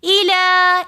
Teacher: ومتاع الا کے اوپر کھڑا زبر ہونے کی وجہ سے ہم یہاں پر الا ایک الف کی مقدار کھینچ کر پڑھیں گے